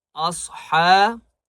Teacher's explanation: صاد کو موٹا کریں گے، ہا کو ایک الف کی مقدار کھینچ کر پڑھیں گے